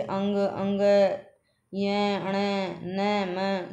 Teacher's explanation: नासिका नासिका से अंग अंग य अण न म सभी क्याय नाक से बोले जाते हैं नाक बंद कर ले तो ये अच्छे से नहीं बोले जाते